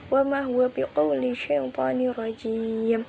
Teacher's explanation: Rajim merupakan hukum bacaan mat arid li sukun karena mat bertemu sukun sebab dibaca waqaf. Cara membacanya ialah dibaca panjang, boleh 1, 2 atau 3 alif.